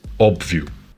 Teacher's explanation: Portuguese has an additional open O, which sounds like the O in pot.